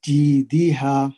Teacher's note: جی میں یائے مد ہے، یہاں پہ بھی 2 حرکت لمبا کریں گے. ہا پہ الف مد ہے تو اس کو 2 حرکت لمبا کریں گے